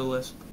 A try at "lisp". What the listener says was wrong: Man, you have a fucking lisp, nigga.